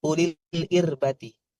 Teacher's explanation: ir-nya tipis saja karena kasrah